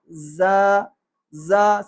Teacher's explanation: زبان نیچے والے دانتوں کی جڑ میں ٹکراتی ہے تو تیزی سے آواز نکلتی ہے ہوا کے ساتھ، تو سیٹی کی آواز پیدا ہوتی ہے۔ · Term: سیٹی والے حروف